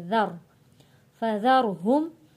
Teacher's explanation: ذال کو نرمی کے ساتھ پڑھیں گے اور را موٹا پڑھیں گے